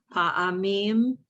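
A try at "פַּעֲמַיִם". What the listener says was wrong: You left out a syllable. There it is, pa'amayim.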